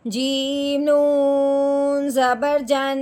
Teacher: جیم کے اوپر زبر ہے، نون کے اوپر شد ہے، یعنی کہ نون پھر مشدد ہو گیا۔ اب ہم نے جیم کو نون مشدد کے ساتھ ملانا ہے، ساتھ ساتھ ایک الف کے برابر لمبا غنہ بھی کرنا ہے